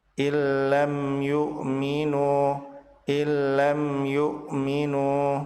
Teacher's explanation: Mim sukun bertemu dengan ya, mim dibaca jelas dan disebut sebagai idhar syafawi.